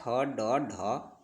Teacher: ट वर्ग जो होता है यह मूर्धन्य के अंतर्गत आता है